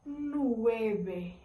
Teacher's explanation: o V, quando a gente tá falando as palavras, a gente pronuncia ele como se fosse um B